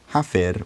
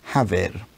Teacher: And at some point after that stage, but before the time of textbook Old English, a rule developed where if f, s, th were between two voiced sounds, which is two sounds made with the vocal folds vibrating, then they themselves would become voiced v, z, th. So our hypothetical word hafir would become havir.